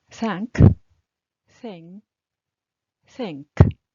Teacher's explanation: Ың деген біздің өзіміздің қазақша ың ұқсайды. K айтылады, G айтылмайды, ың болып қалады.